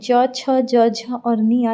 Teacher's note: उसके बाद आता है च वर्ग। च वर्ग, जब आप च बोलते हैं तो आपकी ज़बान जो होती है वो छूती है तालु को, इसीलिए इस व्यंजन को बोला जाता है तालव्य।